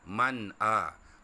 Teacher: Tengok contoh dia. Man amana, nun mati bertemu dengan hamzah, nun sakinah bertemu dengan hamzah, maka nun tu dibaca jelas dan nyata. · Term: hizal halqi